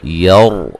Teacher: را کو موٹا ادا کریں گے، را ساکن سے پہلے زبر ہے